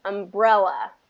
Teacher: okay second syllable stress umbrella